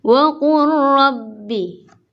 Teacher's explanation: tapi dibacanya langsung wa qur rabbi, lamnya dianggap tidak ada, langsung ke ro. Wa qur rabbi. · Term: idgham mutaqaribain